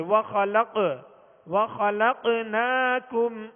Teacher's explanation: قاف ساکن ہے لہذا یہاں پر قلقلہ کریں گے